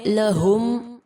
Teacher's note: ہا اقص الحلق سے ادا ہوگا